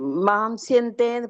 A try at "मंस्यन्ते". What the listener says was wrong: மாம் இல்ல, மன்சியந்தே தான். மான்னு மாத்திக்கோங்க, அந்த கால் இருந்தா அடிச்சுடு.